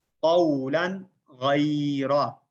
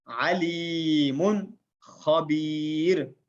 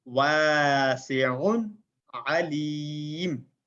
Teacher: ان سب کو ہم نے بغیر غننے کے ظاہر کر کے پڑھا